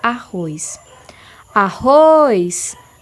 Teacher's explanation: a última sílaba da palavra é uma sílaba tônica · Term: oxítonas